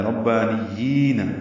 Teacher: ربانیین میں را پر پڑھیں گے، با سے ملائیں گے. با پر کھڑا زبر ہونے کی وجہ سے دو حرکات لمبا ہے، نون کو یا سے ملائیں گے.